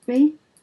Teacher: Now this has got a rising intonation contour.